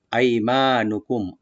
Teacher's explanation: আইমানুকুম, আই হামজাটাকে right দিবেন, আর ইয়াটাকে এখানে হরফে লিন, আই মা একালে টানবেন